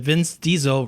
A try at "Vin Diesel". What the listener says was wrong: Now, this is Vince Diesel. This is not Vin Diesel. You said